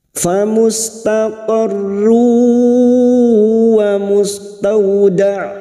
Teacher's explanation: taqarru dumat tanwin bertemu waau Idam bunah siap masuk dengan mendengung masuk pada huruf wau dan mendengung selama tiga harakat